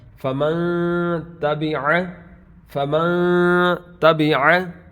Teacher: فمن نون کی آواز جو ہے فمن نہیں ہوگی بلکہ آواز کو ناک میں لے جائیں گے. تو غنہ کا مطلب ہی یہ ہوتا ہے کہ آواز کو ناک میں چھپا کر ناک میں لے جا کر پڑھنا.